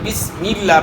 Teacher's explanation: اس طرح سبحانک اللہم، اس طرح جہاں بھی لفظ اللہ کا نام آئے گا اللہ اکبر، تو یہاں جو ہے لفظ اللہ کے نام سے پہلے والے حرف کے نیچے زیر ہے، تو اس لیے لفظ اللہ کا نام جو ہے موٹا ادا نہیں ہوگا بلکہ باریک ادا ہوگا